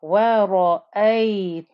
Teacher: You join to the noon with the shadda. Noon with the shadda, you must hear the ghunna. So, وَرَأَيْتَنْ, there's the ghunna.